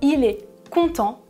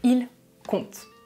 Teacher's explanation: à la fin des verbes à la troisième personne du pluriel on ne prononce jamais -ent